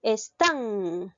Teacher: lleva la mayor fuerza de voz en la sílaba tan esta es una palabra aguda las agudas se tildan cuando terminan